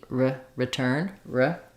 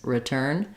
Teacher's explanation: that reduced schah and the reduced I those are very short